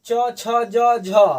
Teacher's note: तो जितने भी तालु में टच कर रहे हैं तो यह सारे तालाबे के अंतर्गत आ जाते